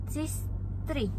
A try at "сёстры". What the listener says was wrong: Сестры. You change «е» to «ё», not «сестра», «сёстры».